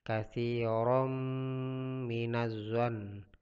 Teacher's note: Jadi di sini katsiran, di sini hukum bacaannya adalah idgham bigunnah. Jadi di sini berdengun ya